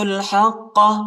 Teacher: حق کو قاف کے ساتھ ملائیں گے اور قاف کو شدت کے ساتھ پڑھنا ہے اور موٹا بھی پڑھنا ہے